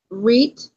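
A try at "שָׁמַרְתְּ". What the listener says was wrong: Now that's a tav. Shamar T. Shamar T.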